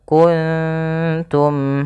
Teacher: Kalau di sini ketemu ta, maka samarkan ikhfa-nya atau nunnya samarkan ke ta